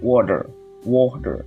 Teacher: the American speaker pronounced the T more like a soft D